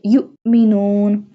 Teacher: Jazm mean it has no harka on the hamza, so we apply a sudden break on hamza